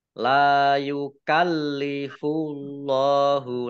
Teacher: Allahnya dibaca tebal karena harakat di depannya domah · La Rabbana wala tahmil alaina isran kama hamaltahu alal ladzina Rabbana wala tuhammilna ma La matobi'i yukallifu, lamnya dibaca double, ada tasdidnya. Allahnya dibaca tebal karena harokat di depannya dhammah.